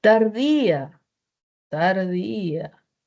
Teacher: Por yato acentual. Mayor fuerza de voz en la i al lado de una vocal abierta.